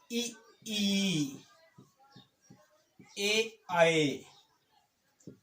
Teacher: अग्रस्वर जो मुंह के अग्रभाग से बोले जाते हैं